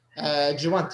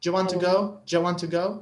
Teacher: The question starts with do you. Yes. We say it like jo.